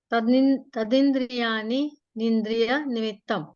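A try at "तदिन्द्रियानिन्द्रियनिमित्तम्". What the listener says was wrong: हाँ, ये अपन क्या हो रहा है, देखिए इसको ध्यान रखना आप सब लोग। तदिंद्रियानी निंद्रिय निमित्तम, इसमें नी जो है रिपीट हो रहा है 2 बार, तो रिपीटेशन नहीं हो उसका, वो गलत उच्चारण होता है। अपने को रुकना है तो यहाँ पे रुकिए, तो रिपीट नहीं हुआ। तदिंद्रिया निंद्रिय निमित्तम, तदिंद्रिया निंद्रिय निमित्तम, सांस लेना है ना, यहाँ पे ले लीजिए, तदिंद्रिया निंद्रिय निमित्तम, है ना।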